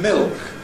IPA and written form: mɪɫk (milk)